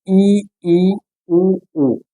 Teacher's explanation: ई उ उ यह समृत स्वर है क्या है समृत स्वर इनके उच्चारण में मुख सबसे कम खुलता है